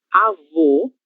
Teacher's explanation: No avô, a gente tem os lábios quase fechando, um som fechado